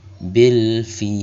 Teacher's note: Maka cara bacanya durasinya dibaca panjang, boleh 2, 4 atau 6 harokat, asalkan selalu konsisten membacanya dalam satu kali bacaan. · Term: mad arid lis sukun